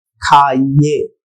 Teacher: यहाँ पर य वाली ध्वनि नहीं आ रही है, यहाँ पर ए वाली ध्वनि ही आ रही है। खाइए शब्द में ए वाली ध्वनि आ रही है, न कि य।